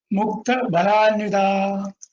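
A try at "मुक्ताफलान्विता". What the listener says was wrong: Mukta Phalanvita. Mukta, there is a P. P.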